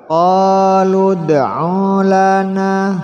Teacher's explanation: dal termasuk huruf qalqalah dipantulkan